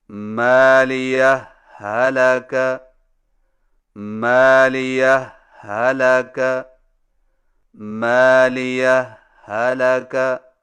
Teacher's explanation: پہلا طریقہ یہ ہے کہ دو الگ الگ ہاؤں سے پڑھیں لیکن پہلی ہا پر معمولی سا وقفہ کر کے لفظ حلقہ کی ہا کو بغیر تشدید کے پڑھیں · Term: اظہار